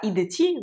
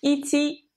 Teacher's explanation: Mais grosso modo, d devient t. Ça se fait pour faciliter la prononciation. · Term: assourdissement d'une consonne sonore